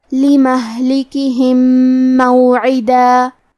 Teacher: کلمت لمہلکہم میں لام کاف اور ہا کے نیچے زیر ہے، تو ہم یہ تینوں زیر کو برابر سے ادا کریں گے۔ آخری میں میم ساکن ہے، پھر حرف المیم ہے کلمت موعدہ، یہاں حکم ہے ادغام، تو ہم یہ حکم کو غنہ اور تشدید کے ساتھ ادا کریں گے